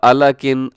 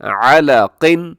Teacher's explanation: قاف کے ہمیشہ موٹا پڑھا جاتا ہے، نیچے بھی حرکات ہوں تب بھی موٹا ہوتا ہے، نہ کہ صرف اوپر ہو.